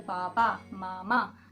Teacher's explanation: इसमें हमारे होठ का आकार चेंज हो रहा है, इसीलिए इन्हें ओष्ठ वर्ण कहा जाता है।